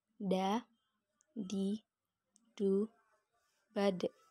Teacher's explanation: Keluar dengan cara menyentuh ujung lidah ke gusi bagian atas. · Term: huruf Da